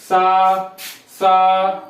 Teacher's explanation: ये हो जाते हैं आपके अघोष, क्योंकि इनको बोलते हैं तो कंपन नहीं होता है।